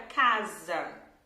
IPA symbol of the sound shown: z